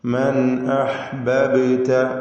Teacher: മൻ അഹ്ബബ്ത, ഈ പദത്തിൽ ബാഇന് സുക്കൂൻ വരുന്നുണ്ട്. ഖൽഖല സുഗ്റ നൽകി ബാഇന്റെ സുക്കൂനിനെ ഹറക്കത്ത് പോലെ വ്യക്തമാക്കി ചലിപ്പിച്ച് ഉച്ചരിക്കുക.